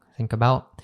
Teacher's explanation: there's also another glottle t there right at the end of about